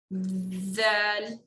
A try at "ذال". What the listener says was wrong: Vibrate it a bit more. Zal.